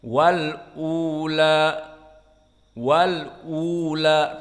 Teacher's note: tahqiq hamzah pertama, yang kedua mad badal 2 harokat